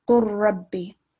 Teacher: Lam sakin is missed out.